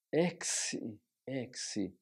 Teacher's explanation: ela se diferencia da mesma palavra apenas com a aspiração Branda